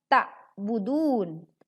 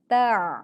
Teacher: Kemudian ta kembali huruf ain bersukun tidak dibaca ta'budun tapi ta oke suaranya lebih berat karena pita suara menyempit